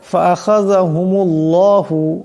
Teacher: আল্লাহর লামকে মোটা করিয়া পড়তে হবে ডাইনে পেশ আসছে